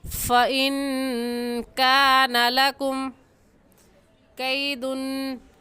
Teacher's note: لکم کی میم ساکن پر غنہ نہیں کریں گے · ان پر غنہ کریں گے کیونکہ نون ساکن کے بعد حروف ہلکی میں سے کوئی لفظ بھی نہیں ہے